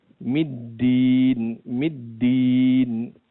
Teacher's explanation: lidah bertemu dengan pangkal gigi depan yang bergantung dengan gusi bagian atas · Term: huruf Dal